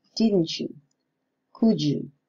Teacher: the coalescent is more complete in the case of alveolar plosives plus the palatal semivowel. especially in meaning questions or question tags.